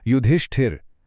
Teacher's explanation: ष्ट के बाद एक हल्की इ की आवाज है।